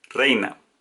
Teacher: El acento está en la vocal abierta E.